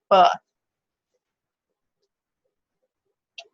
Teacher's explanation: And this is our voiced bilabial plosive.